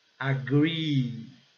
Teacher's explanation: Nesses casos aqui, ó, quando ele vem em dupla, double E, então a pronúncia, ele é pronunciado e com o som de I prolongado e bem forte